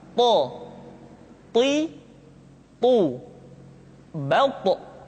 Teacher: ketika to diucapkan, suara kita terdengar menebal